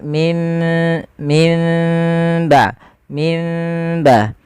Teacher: Furjah ada masih menyisakan sedikit rongga untuk dia bibir kita tidak terlalu rapat, maka ada furjah.